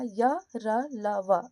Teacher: आप उच्चारण करोगे तो इन चारों वर्णों में से किसी में भी आपका मुख का किसी भी भाग का स्पर्श नहीं होगा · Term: अंतःस्थ व्यंजन